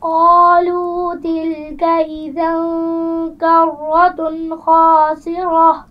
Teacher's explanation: تنوین کے بعد حروف حلقی میں سے خا آ گیا ہے، تو کیا یہاں پر غنہ ہوگا؟ نہیں. تو یہاں پر غنہ نہیں کریں گی.